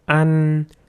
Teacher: in this word the ă sound is very short but the 'nnnn' sound is very long